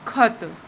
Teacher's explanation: खत बोलने में हमारी वायु भी ज्यादा निकल रही है · जिसके उच्चारण में वायु क्या निकलती है? अधिक मात्रा में निकलती है। जैसे ही हम बोलेंगे उसके वर्ड को और जो हका जो साउंड है वो हमको क्लियरली सुनाई देगा। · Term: महाप्राण, महाप्राण व्यंजन